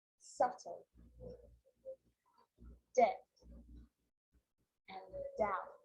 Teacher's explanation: my lips aren't closing, coming together to form the B sound. I'm just pronouncing the T.